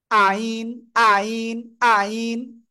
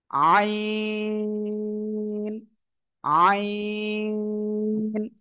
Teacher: সঠিক উচ্চারণটা কি হবে? গলাটা চেপে উচ্চারণ করতে হবে